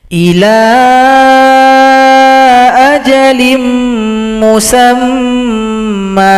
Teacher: mim dihilangkan salah satu harokat, Kemudian dengungkan dulu, baru dipanjangkan 2 ketukan. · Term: mad iwad